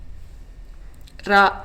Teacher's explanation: நாவின் நுனியை மேலண்ணத்தின் முதல் பகுதியை தொட்டு வருவதால் தோன்றும் எழுத்து